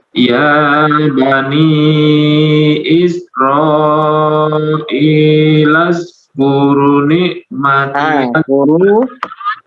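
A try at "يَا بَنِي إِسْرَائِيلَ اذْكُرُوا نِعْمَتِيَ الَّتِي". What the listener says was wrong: Ru-nya 2 harakat. Di situ ada apa? Ada wawu.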